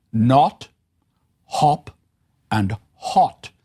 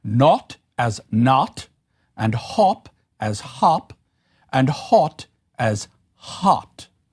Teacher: I'm exaggerating a little, but I want to make clear the way in which these are rounded sounds. In American English, these tend to be unrounded. That is that the vowel was pronounced with the lips relatively flat rather than round. And so this created the sound more like an a than an o.